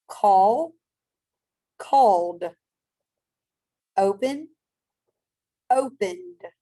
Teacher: these are words you're going to add e d but you're only going to add the d sound to the end of it